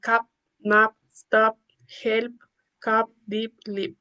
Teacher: In English, P in the final position is not aspirated.